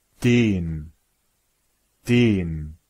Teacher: in questa parola c'è una N dopo la e Ciò significa che la vocale è lunga e lenta